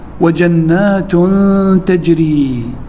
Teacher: عندنا التنوين بالضم وبعده حرف التاء، والتاء من حروف الإخفاء